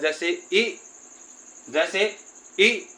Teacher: छोटा इ मतलब एक झटके के साथ बोला जाएगा